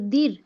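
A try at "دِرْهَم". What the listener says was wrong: এই যে দীর যাতে না হয়, ডাল রজের দীর হয়, এই উচ্চারণটা যাতে না হয়, দদ রজের দইর, উহ দইর, দইর, দইর, এরকম একটু মোটা মোটা আওয়াজ হবে।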